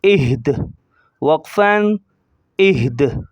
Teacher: دال کی زیر کو ظاہر نہیں کریں گے جب ہم وقف کریں گے، اسٹاپ کریں گے